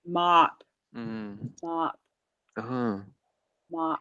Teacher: The mouth wants to round because it's M and P, right? M and P are like pressing together, so you have to mop.